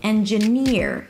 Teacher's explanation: Here the primary stress is on the last syllable. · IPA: ˌendʒəˈnɪɹ